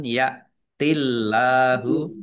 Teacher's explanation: Allahnya dibaca tipis karena harakat di depannya kasrah